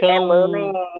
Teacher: são palavras que a gente acaba anasalando, a gente pronuncia elas aqui no nariz.